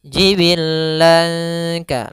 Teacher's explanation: Karena ikhfa itu apabila ada nun sukun atau tanwin an in un bertemu dengan huruf ikhfa yang 15, maka dinamakan dengan bacaan ikhfa. Maka samarkan suara lannya kepada huruf kaf. Jibillanka, langsung seakan-akan melafalkan huruf kafnya.